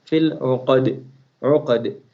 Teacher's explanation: ayn of uqad will come out from halaq. And dal, we are going to remove kasra from dal, zair from dal, because we are going to stop on this ayah.